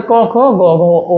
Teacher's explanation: কণ্ঠ থেকে উচ্চারিত হয় ক খ গ ঘ ও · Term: কণ্ঠ বর্ণ